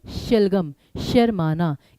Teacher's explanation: इसमें जीभ आपकी सीधी रहती तो श का उच्चारण स्थान है आपका तालु